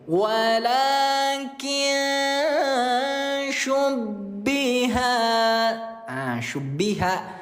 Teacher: Ikhfa nun mati bertemu dengan huruf sya dibaca samar disertai dengung 2 harokat. Kita dengungkan juga 2 harokat.